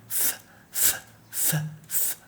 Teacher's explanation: Place your tongue like this or your hand like this in your throat and notice there's no vibration when you say th